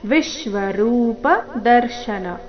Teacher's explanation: ವಿ ಮೇಲೆ ಆಘಾತ ಬರಬೇಕು